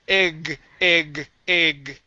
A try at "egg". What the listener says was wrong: Oh, almost. Give me that G sound. G. Egg, g, egg. All right, so it's a little bit tricky for you to end on that G, okay?